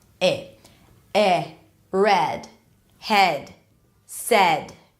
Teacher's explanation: two vowels that go together within the same syllable so here this is an e sound just a bit more open than a neutral e sound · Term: American e, American E